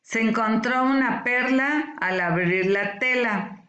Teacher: Aunque aquí no hay tilde escrita, pero hay un tipo de acento en la palabra perla, ¿verdad? Entonces, el acento está en la E.